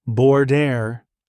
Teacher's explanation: Your tongue should curl slightly at the R. Then notice the D in the middle. That's a flap sound, quick and soft, almost like a fast D tapped against the roof of your mouth.